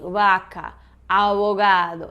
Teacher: Que é aquele, digamos que intermediário entre V e B, né? Ou como se tu fosse tentar fazer um B sem pressionar os lábios, deixar mais soltinho, mais abertinho, né? Quase aberto.